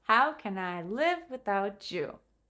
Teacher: The other words that are not the question, the verb or the final without you become smaller. Can I becomes can I?